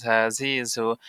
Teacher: সামনের নিচের দাঁতের আগা হতে শীষ সহ পাতলা ভাবে আদায় হবে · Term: শীষহ পাতলা ভাবে